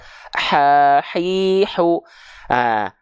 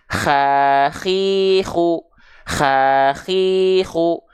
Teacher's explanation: ha kecil tepat dari bagian tengah tenggorokan. Karakteristik nafasnya nafas yang berbisik.